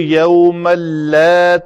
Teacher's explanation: یوم اللہ، تنوین کے بعد لام آیا ہے حروف یرملون میں سے، تو ادغام کامل ہوگا، یعنی اس نون تنوین کی آواز جو ہے وہ بالکل باقی نہیں رہے گی، لام پڑا جائے گا